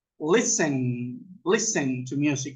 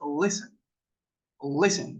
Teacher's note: La T no suena, es listen. Quítenle la T al listen y suena listen. Solo que la L es un poco como giran la lengua un poco hacia el lado.